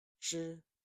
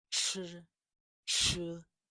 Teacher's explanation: This sound has more air than ZH. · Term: CH sound